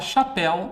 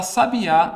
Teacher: minha última sílaba é pronunciada com mais força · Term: oxítona